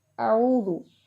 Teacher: حمزہ کو سخت پڑھتے ہیں، عین کو ہم نے حلق کے درمیان سے نکالتے ہیں، ٹھیک ہے، اور زال کے اوپر پیش ہے اور آگے واؤ ساکن ہے تو یہاں پر واؤ مدہ ہو رہا ہے، واؤ لمبی ہو رہی ہے